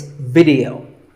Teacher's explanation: both the I and the E are pronounced as short I sounds.